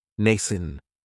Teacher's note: It has the long A sound, nascent. That second syllable has that schwa